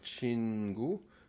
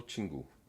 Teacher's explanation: je prononcerai le chin un peu plus court. Donc au lieu de dire chingu, je dirais plutôt tingu.